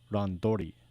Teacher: T sometimes goes to D, as you can see in the word ran plus tori equals randori.